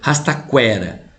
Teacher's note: Quase sempre o U e o E é semivocal. Quera, você percebe que o E é mais forte. Ela é uma vogal, ao passo que o U é uma semivogal. Por isso elas ficam na mesma sílaba, porque você tem uma semivogal e uma vogal. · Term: ditongo crescente